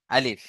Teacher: মুখের খালি অংশ থেকে উচ্চারণ হয় আলিফ